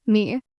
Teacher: the first tone, which is high and steady, like holding a musical note. Me. Then there's the second tone, which rises up like you're asking a question.